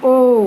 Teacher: तो आपके कंठ में भी झंझन हो रही है और ओ आपके होठों की भी शेप बन रही है। तो कंठ से भी साउंड आ रही है और होठों की भी शेप बन रही है, इसलिए ये वर्ण किस में आते हैं? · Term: कंठोष्ठ